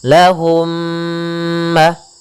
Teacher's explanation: yang satu mim sukun yang satu mim berharakat maka caranya adalah masukkan mim yang pertama kepada mim yang kedua kemudian ditahan gunahnya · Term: idgham mimi